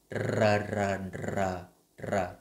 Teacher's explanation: khi mình phát âm chữ R là mình sẽ đưa cái lưỡi ra ở phía ngoài và mình tạo cái độ rung khá là mạnh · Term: chữ R trong tiếng Việt